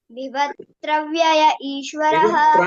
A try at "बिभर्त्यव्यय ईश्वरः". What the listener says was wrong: అంటావు బిభర్త్ర అంటావు ఆ రా ఎక్కడి నుంచి వచ్చి నీకు బిభర్త్యవ్యయ బిభర్త్రార్త్ర అంటావు బిభర్త్ర లేదమ్మి బిభర్త్యవ్యయ ఈశ్వరః